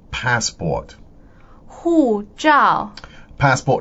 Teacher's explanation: now that's fourth tone and fourth tone again